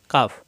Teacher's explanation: জিহ্বার গোড়া থেকে একটু আগে বাড়িয়ে শক্তকারে উচ্চারিত হয় স্বাভাবিক উচ্চারণ হবে এটা কাফ এটা কাফ জিহ্বার গোড়া থেকে একটু